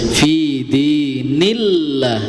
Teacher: Kalau yang ayat kedua dibaca tipis karena sebelum lafaz Allah ada huruf yang berharakat kasrah ya. Maka dibaca tipis.